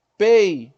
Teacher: O E e o I ficaram juntos na mesma sílaba. Eu tenho um ditongo aqui. Só que para eu ter 2 vogais numa mesma sílaba, uma tem que ser semivogal e a outra tem que ser vogal.